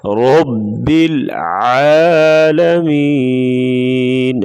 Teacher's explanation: را کے اوپر زبر ہے تو را کو پر پڑھیں گے موٹا